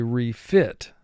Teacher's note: we punch that second syllable in emphasis